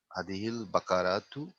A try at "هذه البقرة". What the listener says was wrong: Okay, beautiful.